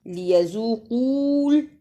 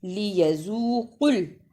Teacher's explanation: قاف پیش لام قل، یہاں جو واو ہے اسے نہیں پڑھنا، لیذوقول ایسے نہیں پڑھنا، لیذوقل۔